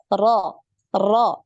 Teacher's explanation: getaran dari huruf ro ini tidak lebih dari 1 kali getaran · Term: takrir